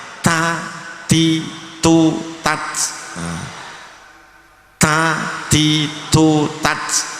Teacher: harus ditekan, tapi ketika keluar nafasnya banyak karena hames ya. Jangan kelihatan ujung lidahnya, jangan ta ti tu tat.